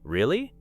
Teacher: Now imagine someone tells you something unbelievable and you respond with a slower, lower, really? This time you may be showing doubt.